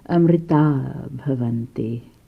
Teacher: So the ha sound, called the visarga, disappeared.